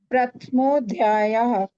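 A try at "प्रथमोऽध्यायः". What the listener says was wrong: it's not Prathmo, not Hindi. Do the Anupurvi of Prath. You're reading it as Prathmo. So how do you do the Anupurvi? It's not Rikara. We have said Rikara doesn't like Rikara.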